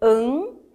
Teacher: ao falar este an, eu percebo que este som sobe. Ele vem aqui para esta cavidade nasal. Então, ele nasaliza. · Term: dígrafo nasal